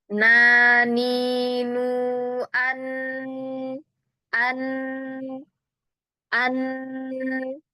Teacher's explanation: Masih huruf yang tawassud atau bainiah. Huruf nun makhrajnya merupakan perpaduan dari lidah dan pangkal hidung ya. Maka dia punya sifat gunah ya. Lidah memberikan sifat syiddah ya.